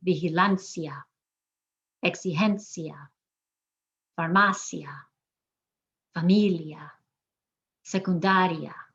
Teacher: all these have an IA at the end that's one sound, that's a vowel sound, and we're emphasizing the second to last syllable